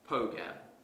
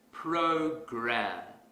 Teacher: to our previous example suppose I pronounce this word as pogam that's incorrect because the r sound is missing